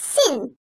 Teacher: Dil ucu ile ön dişlerin iç yüzünden çıkarılır. İnce seslidir, keskindir.